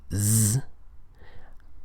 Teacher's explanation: Other consonants like Z, the Z sound in English, are voiced.